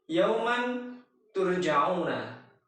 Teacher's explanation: kita menyamarkan bunyi nun sukun atau tanwinnya ini pada huruf ta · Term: ikhfa